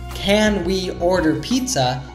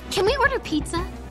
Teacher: Natives usually reduce the auxiliary verb can to kin.